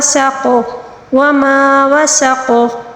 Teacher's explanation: وقف کے دوران قاف کو قلقلے کے ساتھ پڑھنا ہوگا، ٹھیک ہے، کیونکہ وقف کے دوران جو ہے زبر کو ہم ساکن کے ساتھ تبدیل کر کے پڑھیں گے، ٹھیک ہے، قلقلے کے حروف میں سے آتے ہیں.